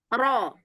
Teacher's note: Jangan o. Jangan ditutup pita suaranya. Jangan dikasih hamzah.